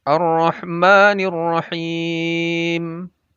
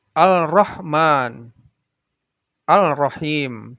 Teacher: Karena alif lamnya menjadi idgham, masuk ke ra-nya. · Dan membacanya adalah dengan dileburkan atau diidghamkan. Jadi alif lamnya tidak dibaca, langsung tasydid ke arah huruf-huruf berikutnya. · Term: idgham syamsiyah